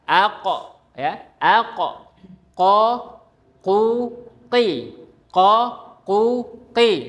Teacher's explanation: Jadi qaf adalah pangkal lidah bertemu dengan langit-langit yang lunak ya. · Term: huruf qof, huruf qaf